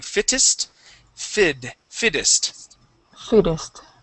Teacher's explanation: we can actually switch the Double T to a D sound